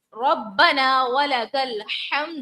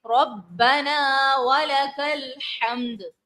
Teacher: با کو جماؤں سے ادا کریں گے، ربنا، الف مدہ ہے، کھینچیں گے